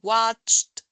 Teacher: el Ed pronuncia como una t al final